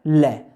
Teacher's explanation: जब लय बोलेंगे दोनों साइडों से प्राणवायु बाहर आएगी और जीभ का आगे का जो भाग है मसूड़ों से टच हो जाएगा, ये है पार्श्विक।